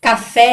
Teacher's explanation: Café é a mesma coisa, então fé é a sílaba mais forte, então ela é uma oxítona